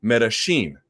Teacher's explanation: If you go to Argentina, they say it like a sh. They pronounce it Medellin.